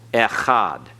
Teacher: Notice you have a segol, echad. Notice the only sound of the aleph is the sound of the vowel